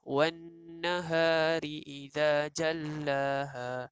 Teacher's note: nun ini merupakan nun yang dinamakan, hukum tajwid dia adalah wajib dengung